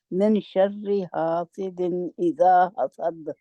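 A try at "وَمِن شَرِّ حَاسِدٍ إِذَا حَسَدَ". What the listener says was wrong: नून की आवाज को जाहिर नहीं करना, नून की आवाज को थोड़ा सा छिपाना है और गुन्ना के साथ बाहर निकालना है। इसकी इख्फा की आवाज जो है नाक में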